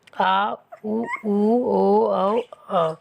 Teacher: पश्च स्वर में जीभ पीछे की तरफ रहती है। आ, उ, ओ, औ, वे।